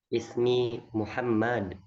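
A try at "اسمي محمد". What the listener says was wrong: Muhammad. Nggak boleh panjang ya mimnya ya.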